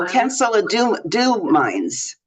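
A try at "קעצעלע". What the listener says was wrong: Ketzele, there is no nun there.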